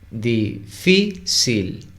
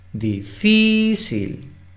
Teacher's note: La sílaba tónica es fi.